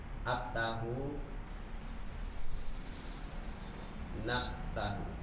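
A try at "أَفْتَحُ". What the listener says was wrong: Aftahu, bukan ab ya. Bukan huruf P, tapi fa. Kalau huruf P nggak ngalir suara, kalau huruf fa suara ngalir.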